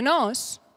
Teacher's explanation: for many speakers in the area of Girona, like myself, there is no such thing as an open O and a closed O. There is just one vowel O.